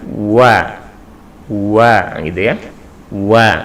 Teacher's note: wawu adalah bagian dari makhorijul hurufnya di bibir atau syafaat maka ketika melafadzkan huruf wawu itu di monjongkan dulu kemudian ditarik